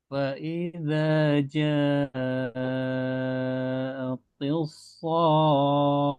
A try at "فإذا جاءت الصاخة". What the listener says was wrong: Taknya jangan tebal ya. Ti, nah itu to tebal. Nah, sedangkan di sini taknya tipis. Ti, ti, ti gitu ya. Tis, so, ti, ya, ya, tipiskan. فإذا جاءت الصاخة.